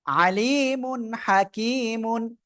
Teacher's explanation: এখানে তানভীনের পরে ইজহারের অক্ষর হা স্পষ্ট আকারে পড়বো